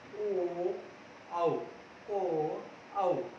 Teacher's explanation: ये हमारा जो कंठ है वहां से इसकी ध्वनि निकलती है, और हमारे जो ओष्ठ है वहां से ये उच्चरित होता है। अगर हमारा ओष्ठ जो है बच्चों खुलेंगे नहीं, गोल नहीं होंगे, तो ये उच्चरित नहीं होगा। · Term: कंठोष्ठ